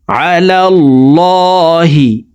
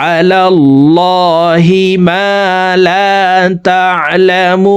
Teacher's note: আহদাহু আহদাহু আম তাকুলুন أم تقولون عهده أم تقولون على الله ما لا تعلمون আলাল্লাহি এই লামকে ল বলে পড়তে হবে, কারণ আল্লাহ শব্দের আগের হরফে জবর আছে, এই কারণে এই লামকে মোটা করে অর্থাৎ ল বলে পড়ব